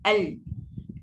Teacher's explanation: Lidah kita akan macam menyengit al. Dan bila lidah kita menyengit, udara yang keluar dari tekak kita tu dia terpaksa menyerong pergi tempat lain. Dia tak boleh sebab dia terhalang dengan lidah menyerong tu. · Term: inhiraf